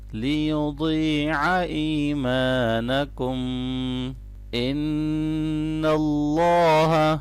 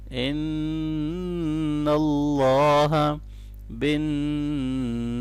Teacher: نون مشدد پہ غنہ کریں گے اللہ کے نام کو موٹا پڑھنا ہے